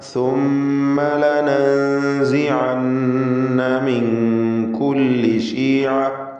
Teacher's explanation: ലനൻസിഅന്ന, ഇതിൽ സാക്കിനത്തായ നൂനും ശേഷം സാവും വന്നിട്ടുണ്ട്. ഇഖ്ഫ ഹഖീഖി നൽകി മറച്ച് മണിക്കണം.